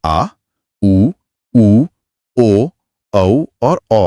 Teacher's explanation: पश्च स्वर। जहां जीभ का पिछला हिस्सा एक्टिव रहता है। इसमें आ, उ, उ, ओ, औ और औ आते हैं।